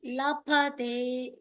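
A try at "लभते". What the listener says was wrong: Labhate. Like bhayam. Labhate. Labhate. Bhayam. Bhayankaram. That bha. Labhate dhanam. Labhate. You are still saying pa there.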